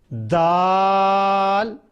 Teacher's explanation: ज़बान की नोक ऊपर वाले दांतों के पीछे रखकर दाल को अदा करना है।